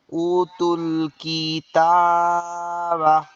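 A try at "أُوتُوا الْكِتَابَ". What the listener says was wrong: উতে টান হবে না, পেশের বাম পাশে যজমালা ওয়াও। এই যে আমরা পড়তেছি যে হামজায় টান হবে, এটা এটা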